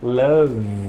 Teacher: deles tá então por exemplo se você pega o verbo Love o som do V dá uma vibrada aqui na nossa garganta